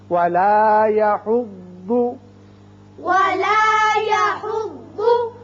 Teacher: ضاد کے مخرج میں آپ کی زبان کی کروٹ اوپر والی داڑوں کے ساتھ لگے بائیں طرف